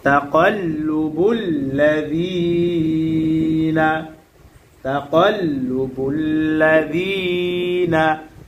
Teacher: জেরের পরে ইয়া সাকিন মাদের হরফ। আর মাদের হরফ হইলে এক আলিফ টানিয়া পড়িতে হয়, ইহাকে মাদ্দে তবাই বলে।